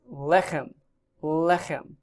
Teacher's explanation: Notice that it's accented on the first syllable.